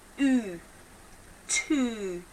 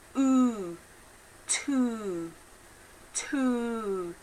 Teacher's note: So when I'm making the T sound, my tongue is right at the front of my mouth, but immediately I pulled my tongue back.